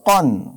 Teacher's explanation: কফ দুই জবর কন, কান বললে ভুল হবে, বলতে হবে কন, এটাও মোটা। কফ দুই পেশ কুন, কফ দুই জের কিন, কন কুন কিন।